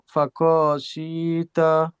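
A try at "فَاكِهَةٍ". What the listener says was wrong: আবার খতে টান হয়ে যাচ্ছে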